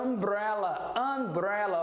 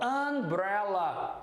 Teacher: Umbrella, ó, tem um som de A nasalizado, ó. Umbrella.